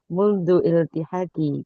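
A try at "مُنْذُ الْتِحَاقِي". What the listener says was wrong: Kalau bacanya langsung disambung ya ini. munzul tihati. Munzul tihati. Disambung saja.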